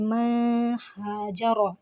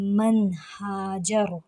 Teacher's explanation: نون ساکن کے بعد ہا آ گیا ہے جو کہ حروف حلقی میں سے ہے، اور یہاں پر بھی اظہار ہوگا۔ نون کو واضح کریں گے، اسے من ہاجر ایسے نہیں پڑھیں گے، اسے پڑھیں گے من ہاجر۔